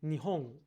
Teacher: I think in Japanese it's a uvular consonant.